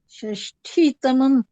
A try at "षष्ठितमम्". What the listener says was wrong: हाँ, षष्ठी तमम, हाँ ट होगा, ठ नहीं, षष्ठी तमम।